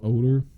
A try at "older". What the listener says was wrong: You said ogre, like you were talking about. You said older. Ogre. thought you were saying ogre.